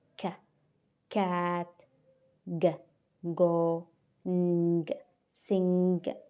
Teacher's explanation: sound produced toward the back of the mouth, involving the velum. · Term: velar